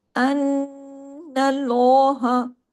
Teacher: نون کے زبر کی وجہ سے آگے اللہ کے نام میں جو لام ہے وہ ہیوی ہو جائے گا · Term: لام جلالہ